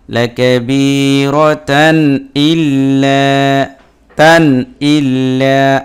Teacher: তানবিনের পরে হামজা আসছে এজহার হয়েছে, স্পষ্ট করে গুন্না ছাড়া পড়তে হবে। লাকাবিরাতান ইল্লা তান ইল্লা, আমি লম্বাও করিনি গুন্নাও করিনি।